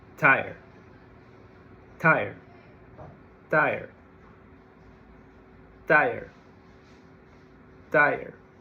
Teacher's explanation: No vibration whatsoever, so the sound is voiceless.